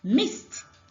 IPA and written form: mɪst (missed)